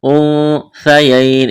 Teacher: للذکر مثل، سا کو نرم کرنا ہے، حظ، حظ، وا کو موٹا کرنا ہے، لام کے ساتھ ملانا ہے۔ انثیین، اخفا کریں گے، نون ساکن کے بعد سا ہے، سا کو نرم کرنا ہے۔ یا ساکن سے پہلے زبر ہے، یا لین ہے، بغیر کھینچ کے پڑھنا ہے، وقف کریں گے، نون کو ساکن کریں گے۔